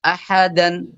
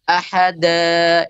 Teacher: mengganti fathah tanwin menjadi Mad dua harakat ketika waqaf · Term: Mad iwad, mad iwad